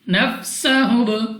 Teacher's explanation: Next ہمارے پاس سین سیٹی والی آواز کے ساتھ پڑھیں گے. با ہمارے پاس قلقلہ ہے, تو جب ہم ادا کریں گے ہماری آواز ہمیں واپس سنائی دے گی